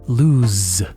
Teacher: Lose, as in perder, has an S sound that sounds like a Z